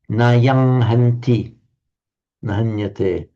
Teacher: So the anuswara comes out as a Ng